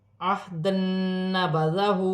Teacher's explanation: دو زبر کی تنوین کے بعد نون مشدد آ رہی ہے، تنوین میں غنہ بھی کیا جائے گا، ملا کر بھی پڑھا جائے گا